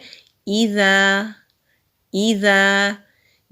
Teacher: زبان کی ٹپ سامنے والے اوپر کے جو دو دانت ہیں وہاں پر نرمی سے ٹچ ہوگی تو ذال ادا ہوگا۔ ذال کے اوپر زبر ہے، آگے خالی الف ہے تو یہ الف مدہ ہے، الف مدہ کو ایک الف کے برابر کھینچ کر پڑھتے ہیں۔